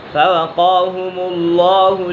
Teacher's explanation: قاف پر ہے، حرف مستعلیہ میں سے ہے اور لام بھی پر ہے۔ اسم جلالت اللہ عز و جل کے لام سے پہلے حرف مفتوح یا مضموم ہو، یعنی کہ حرف پر زبر یا پیش ہو تو اسم جلالت اللہ عز و جل کے لام کو پر پڑھیں گے۔